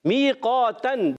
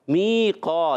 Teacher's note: میقاتن میں یا مدہ ہوگا ایک الف کھینچیں گے قاف الف زبر قا می قا یا مدہ الف مدہ عرف